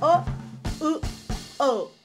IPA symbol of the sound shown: o